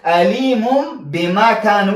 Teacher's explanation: دلته با راغله پس تنوین نشاته نون ساکن یا تنوین نشاته چې دلته نون ساکن و دلته تنوین د دې نشاته چې با راشي با حرف د اقلاب دی دلته اقلاب کیږي · تاسې به د نون ساکنه په میم ساکنه بدل کړئ علیمون بما کان.